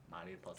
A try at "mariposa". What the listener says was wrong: Mariposa. You gotta roll the R. Mariposa.